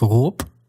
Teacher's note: So the d at the end of haunt is going to turn into a t sound and the b at the end of rop will turn into a p sound